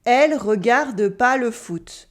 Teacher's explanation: We cut the ne, Elle regarde pas le foot.